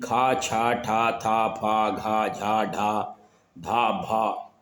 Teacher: महाप्राण में क्या होता है कि इसमें जो हवा है मुंह की वो अधिक प्रयोग होती है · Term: महाप्राण व्यंजन